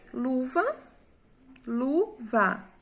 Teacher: Como é o lu, a sílaba mais forte, ela é uma paroxítona, certo?